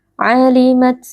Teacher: huruf ta sukun kita keluarkan sedikit nafas